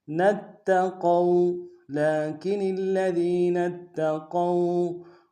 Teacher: قاف کو موٹا ادا کرتے واو کے سامنے لانا ہے، واو لین ہے بغیر کھینچے پڑیں گے